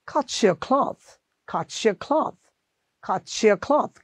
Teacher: এখন এখানে দেখেন সে আবার টি দিয়ে শেষ হয়েছে, ওয়াই দিয়ে শুরু হয়েছে, তাহলে এই টিটা বাদ দিয়ে আমরা এখানে কি উচ্চারণ করব, চ.